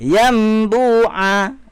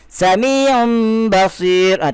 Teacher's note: Kalau berjumpa dengan ba, menukarkan bunyi nun kepada mim serta dengung. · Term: iqlab